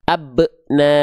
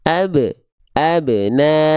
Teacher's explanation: Seolah teman-teman sedang menambah huruf hamzah hamzah sukun. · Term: pantulannya tertahan